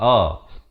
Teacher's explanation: Yang pertamanya hamzah, makhrajnya di pangkal kerongkong